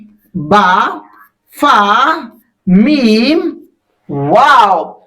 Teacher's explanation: और ये चारों हुरूफ होठों से निकलते हैं।